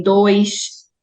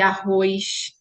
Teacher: a forma como nós chiamos ao pronunciar o S em dois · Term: chiado